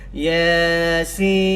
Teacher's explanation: Jangan baca kalau kita pergi mana-mana jemaah, ada kenduri kendara kat qaryah, kalau bukan bulan puasa, banyak baca selamanya kami orang Jumaat Yasin, 6 harakat, jadi salah. Jadi ya ni 2 harakat, sin ni 6 harakat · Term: mad lazim harfi mushbah mukhaffaf